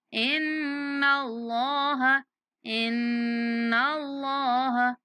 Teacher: اللہ کے لام کو پر کر کے پڑھیں گے